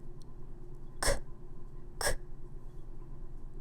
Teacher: It's voiceless. You don't need to use your voice in order to say C.